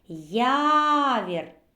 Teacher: так наголос падає на перший склад